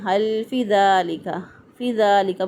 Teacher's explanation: فی کو بعض لوگ لمبا نہیں کرتے، یہاں پہ یا مدہ ہے، اس کو پڑھتے ہیں حل فی ذالک، فی ذالک پڑھ دیتے ہیں، اس کو غلط ہو جائے گا۔